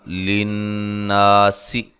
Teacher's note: نون مشدد پہ غنہ ضروری ہے اور الف مدہ ہے